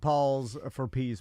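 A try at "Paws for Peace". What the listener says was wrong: paws, like dog have paws, not Paul. P-A-W-S. pause for peace,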